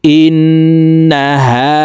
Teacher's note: ছোট হা হলকের শুরু থেকে উচ্চারণ করে পড়বো